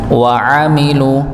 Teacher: Sedangkan wainu amilu dengan huruf ain ya dibaca sesuai dengan tempat keluarnya juga yaitu tenggorokan bagian tengah